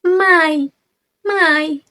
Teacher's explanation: ada a pada my dari a ke i